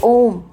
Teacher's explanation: जब ओम बोलते हैं तो ओ को थोड़ा और खींचते हैं, यानी कि एक मात्रा को और हम लेते हैं, उसके बाद ओम बोलते हैं, माँ लेते हैं, ठीक है। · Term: प्लुप्त स्वर